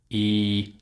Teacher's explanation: The mouth, you can see, is quite closed. The tongue is high in the mouth, but especially the back of the tongue, the sides. You can see in the picture again what I'm talking about. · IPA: /iː/